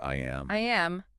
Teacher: There is a totally distinct Y sound connecting the I and the A.